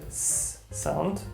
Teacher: an S sound that is similar to the English one, which is a S sound, so unvoiced S. But there are also, and that's the majority of the cases, S sounds that are more of the German SCH, so a sh sound, sh, as in show.